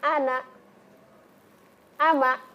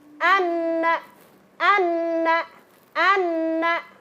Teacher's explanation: Kemudian yang kedua, dengungannya harus 2 ketukan atau 2 harokat. Kemudian melibatkan rongga hidung agar lebih sempurna bacaannya. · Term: gunnah musyaddadah